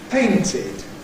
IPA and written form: ˈpeɪntɪd (painted)